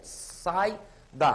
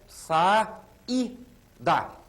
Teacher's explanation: o som de i é muito fraco a tendência dele é se unir a vogal a e criar um ditongo